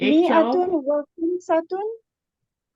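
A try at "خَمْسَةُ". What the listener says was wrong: खमसतु, इसको खमसतुन नहीं पढ़ेंगे, खमसतु आगे वो आ रही है ना, खमसतु व इशरूना आमिला।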